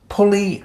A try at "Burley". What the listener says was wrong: Burley. B. Put with a P.